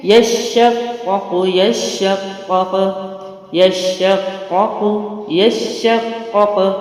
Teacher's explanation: قاف کو قاف سے ملائیں گے تو میں قلقلہ کر رہی ہوں کیونکہ حروف قلقلہ میں سے ہے قاف. جزم لگے گا تو قاف کے ساتھ قاف ملا کے باؤنس کریں گے